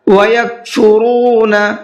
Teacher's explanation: را کو منہ بھر کے بھی پڑھنا ہے اور کھینچ کر کے بھی پڑھنا ہے۔